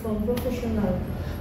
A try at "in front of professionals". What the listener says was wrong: No, in front of professionals. You forget my S.